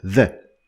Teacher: is voiced, is a voiced sound, which means that you use your vocal cords to pronounce it. So if you put your hands on your throat, you're going to feel a vibration of your vocal cords while you pronounce the letter the, or the sound the.